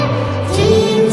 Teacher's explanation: জিমের মাখরাজ জিহ্বার মাঝখান তার বরাবর উপরে লাগিয়ে